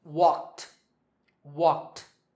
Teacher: the last sound is k, which is unvoiced, so the ed ending is pronounced t.